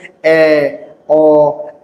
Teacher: জিহ্বা আ উচ্চারণের থেকে একটু উপরে গেছে। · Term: নিম্ন মধ্য স্বরধ্বনি